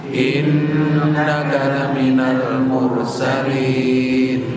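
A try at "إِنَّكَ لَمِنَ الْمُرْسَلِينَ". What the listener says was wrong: Jangan lupa gunanya ya. Ini sama seperti Iyyaka na'budu wa iyyaka nasta'in. 2 harakat. Gak boleh Iyyaka na'budu wa iyyaka.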